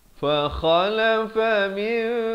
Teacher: Ditukarkan daripada bunyi nun kepada bunyi mim. Daripada min jadi mim ya. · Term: iqlab